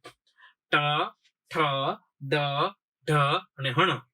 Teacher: ટ વર્ગ બોલો ત્યારે જીભ છે એ ઊંધા નળિયા જેવો આકાર કરી, કેવો? ઊંધા નળિયા એટલે ઊંધી થઈ જશે અને પછી અહીંયા મૂર્ધા સાથે ભટકાશે. કેવી રીતે? પેલા જે બોલતા ની જો જીભ છે ને, આ જીભ છે મારી જીભ, આમ જો હું બોલીશ તો પછી અંદર વહી જાય એટલા માટે આ જીભ છે ને જો આ ઊંધા નળિયા જેવો આકાર થશે, બરોબર. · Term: મૂર્ધન્ય વર્ણ